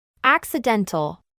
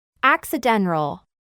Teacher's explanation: cuando a una T le antecede una N, el sonido de la T tiende a anularse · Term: T silenciosa